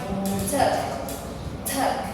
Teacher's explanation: we put a small h in here in t for aspirated